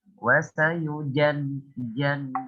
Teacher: ketika huruf masuk ke dalam huruf ja, maka sifat huruf syiddahnya itu harus dikuatkan ya. Contoh, wasayujan jan ya.